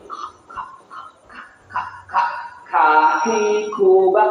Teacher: kalau sukun ada hembusan · Di antara ujung dan tengah lidah dia mengangkat menempel dengan langit-langit.